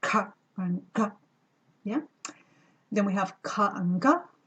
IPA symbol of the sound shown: c ɟ